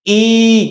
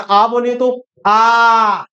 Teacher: बोल के देखिए जरा, ई क्या पूरा मुंह खुला, और जरा आ बोलिए तो आ, है ना। इसका मतलब आ जो होता है साथी उसको हम क्या कहते हैं विवृत कहते हैं, यानी जिसमें हमारा पूरा मुंह खुलता है ना